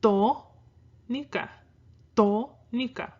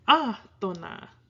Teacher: You don't put your stress on the to in atona, you go atona. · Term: unstressed syllables